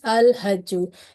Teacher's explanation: it is a Qamari letter, so this indicates the lam will be pronounced clearly, so it is al-hajju.